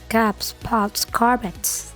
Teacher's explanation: dibaca S setelah voiceless consonant, jadi tetap dibaca S tipis